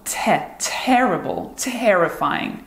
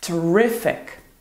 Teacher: Not only does it carry a positive meaning, unlike the previous 2, but it also has a different word stress. See, in the words terrible and terrifying, we emphasize the first syllable, terrible, terrifying, while in terrific, the stress is on the second syllable, terrific.